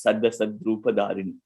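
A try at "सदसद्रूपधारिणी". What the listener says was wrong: No, Sada Sad. So you have to say the Sandhi. So Sat Asat Rupa Dharini. Sat Asat Rupa Dharini.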